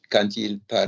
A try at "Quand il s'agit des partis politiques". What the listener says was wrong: No, there's no can. Fuck off, it can. Quand. Match the vowels.